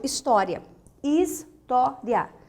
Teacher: segunda sílaba de trás para frente mais forte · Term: paroxítonas